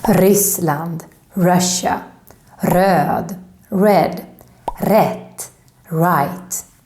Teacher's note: this strong r happens if the word starts with an r